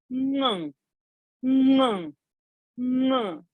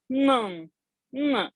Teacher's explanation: So that anuswara, what happens on ga during a ganga, that is this ng, ng, ng. So lips are not touching, tongue is not touching, throat has been used. Through the nose, the sound has to come. Ng. So use the nose, go nasal. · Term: NG sound